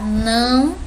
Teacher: Se a gente pronunciar não, a gente sente que sai um pouquinho pelo nariz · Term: som nasal